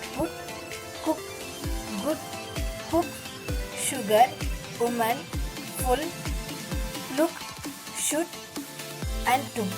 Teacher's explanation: The three-term description of this sound: half closed, back, and rounded.